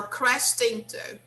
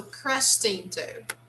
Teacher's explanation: you have to link the sound of t and the word into